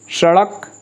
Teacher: क्योंकि जब इसे बोला जाता है तो ऊपर की तरफ जीभ को उछालनी पड़ती है, जीभ को ऊपर उछाल करके मूर्धा से संपर्क करानी पड़ती है, और बड़ी तेजी से नीचे भी उतरना होता है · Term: उत्क्षिप्त व्यंजन